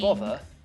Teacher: in the word bother it's become like a V sound